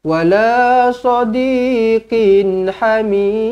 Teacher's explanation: Qin, tanwin selari bertemu dengan ha. Izhar halki dibaca dengan jelas dan terang.